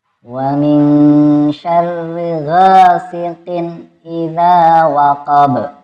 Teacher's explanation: Yang dibaca panjang yang pertama gha, yang kedua za.